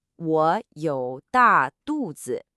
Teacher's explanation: The word was 肚子, belly, with that short, sharp, falling fourth tone.